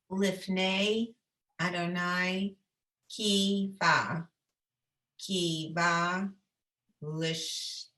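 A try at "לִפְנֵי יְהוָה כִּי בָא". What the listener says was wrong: That's what it, yeah, I think you got that.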